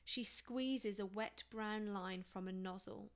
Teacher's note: notice the use of sibilants here to create a soothing tone